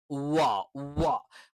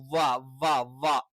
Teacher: നമ്മൾ 2 ചുണ്ടും ഏകദേശം ഒരു വൃത്താകൃതിയിൽ വെച്ചുകൊണ്ടാണ്